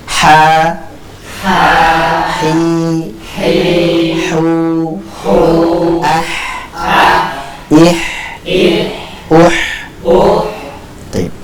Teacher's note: Karena tempatnya adalah diengorokan bagian tengah sehingga terucaplah huruf ha